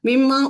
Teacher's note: نون جو ہے وہ میم میں بدلا اور پھر میم کو میم میں ادغام کیا گیا ، کیونکہ نون اور میم کا مخرج ایک ہونے کی وجہ